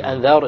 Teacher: Here's a silent راء preceded by a فتحة. It's heavy.